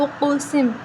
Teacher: قاف حروف قلقلہ میں سے تو ہم اس پر قلقلہ کریں گے